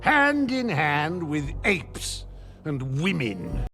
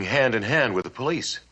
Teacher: we can link that final D in hand with the vowel sound in in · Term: linking